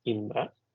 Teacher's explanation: the Indra in the Indra Shatru should be in even tone. That means Indra.